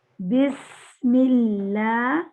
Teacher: سین کی سیٹی بھی نکلتی ہے، سین میں ہوا بھی نکلتی ہے اور سین میں آواز بھی جاری رہتی ہے